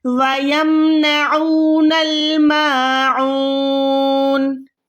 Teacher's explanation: وَيَمْنَعُونَ الْمَاعُونَ, عین میں پروپر فرق ہے الف کے ساتھ, ٹھیک ہے. الف جو ہے وہ سینے والی جگہ سے ادا ہوتا ہے, عین جو ہے حلق کے درمیان سے ادا کرنا ہوتا ہے.